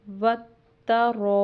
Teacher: الف خالی کے اوپر مد ہے، جس کی وجہ سے ہم اس کو 4 الف کے برابر لمبا کریں گے · ایک تو رو کے اوپر زبر ہے، اس کو پر پڑھیں گے، موٹا پڑھیں گے